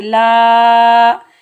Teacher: ان اللہ، لام کے اوپر زبر، آگے الف خالی ہے، الف خالی سے پہلے لام کے اوپر زبر، الف مدہ، اس کو ہم ایک الف کی مقدار کھینچ کر ادا کریں گے